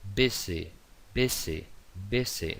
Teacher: No llega a ser pronunciación Z, pero es una S vibrada. Entonces, S entre dos vocales, aquí.